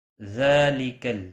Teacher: ذال کے اوپر کھڑی زبر ہے، ایک الف کے برابر کھینچ کر پڑھیں گے